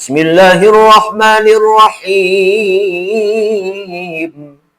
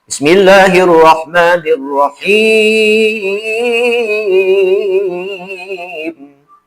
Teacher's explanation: Nah, himnya itu bisa dibaca 3 wajah. Bisa dibaca 2 harkat, bisa dibaca 4 harkat, bisa dibaca 6 harkat.